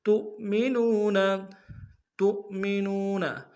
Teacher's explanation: تا کو حمزہ کے سامنے لائیں گے، حمزہ پیش کے لیے واو جھٹکا دیں گے، نون کو واو کے سامنے لائیں گے، واو مدہ ایک انداز میں کھینچیں گے۔